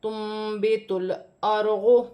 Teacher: نون ساکن کی آواز کو میم سے بدل کر غنے کے ساتھ ادا کیا جائے گا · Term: اقلاب